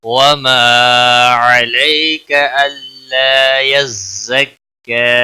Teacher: علی یا لین ہے تھوڑا نرمی کے ساتھ کھینچ کر ادا کریں گے, کا کو کھینچنا نہیں ہے.